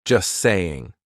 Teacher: We drop that T. We do not pronounce it. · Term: silent T